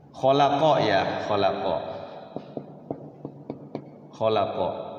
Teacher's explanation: Nah huruf qnya itu kalau yang tidak bertasdid dia langsung mantul khalaqo jadi khalaqo khaqo langsung khaqo khaqo gitu mantulnya itu langsung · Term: qolqalah